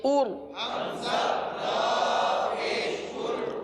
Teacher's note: حمزہ را پیش ار، اس را کو پر پڑھیں گے کیونکہ را ساکن سے پہلے پیش ہے